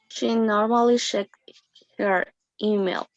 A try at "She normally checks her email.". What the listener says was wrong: Her email. Okay, good.